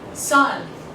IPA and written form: sʌn (sun)